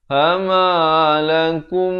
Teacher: mim mati bertemu mim masuk terus ya, idgham mislan saghir dengan dua harakat